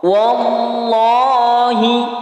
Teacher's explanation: Setiap ada lafaz Allah sebelumnya berharakat fathah atau dhammah, maka disebut lafzul jalalah tafkhim. Maka dia harus dibaca tebal.